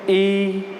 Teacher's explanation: अब ई उच्चारित करेंगे तो आपका जीभ का जो बीच का भाग है ये थोड़ा सा ऊपर उठेगा और तालु को छुएगा। इसका मतलब ये हो जाएगा तालव्य, या इसका जो उच्चारित स्थान है वो क्या है, तालु।